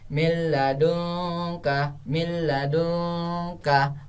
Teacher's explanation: Yang dimaksud dengan 2 huruf itu ialah huruf lam sama huruf ro, maka sama sekali tidak didengungkan dan huruf nun mati tersebut tidak dibaca. Lalu yang dibaca adalah huruf setelahnya dan ditasdidkan. · Oke, itulah tadi nun mati bertemu sama la, berarti huruf nunnya tidak dibaca, lalu la-nya ditasdidkan. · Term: idgham bila guna